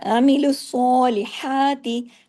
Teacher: जैसे ही लाम और हा पे आए बारीक हो गया